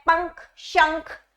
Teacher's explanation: हमारी नाक से भी थोड़ी हवा निकलती है, नाक के द्वारा भी हम उच्चारण करते हैं इसका। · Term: अनुस्वार